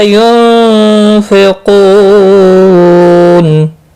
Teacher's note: نون ساکن کے بعد حروف اخفا کا فا اخفا حقیقی ہوگا۔ قو و مدہ ہے، ایک الف کے برابر کھینچ کر پڑھیں گے۔